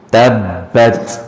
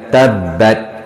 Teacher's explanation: Tabbat, ujung bunyi sebab ya, huruf ta bila mati dia kena bunyi sikit, tapi dia bukan qalqalah